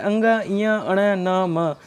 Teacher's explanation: ये प्रत्येक वर्ग के पांचवा वर्ण होते हैं। इनका उच्चारण स्थान नासिका होता है। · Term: पंचम वर्ण